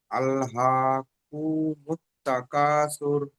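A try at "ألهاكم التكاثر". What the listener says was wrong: কু যেন টান মতন হয়ে যাচ্ছে, আমার যেন মনে হচ্ছে। আল্লাহকু, কাপ পেশ কু। হ্যাঁ, আল্লাহকুমুত তাকাসুর, কু বলে সঙ্গে সঙ্গে মিম সঙ্গে ঝুঁকতে হবে।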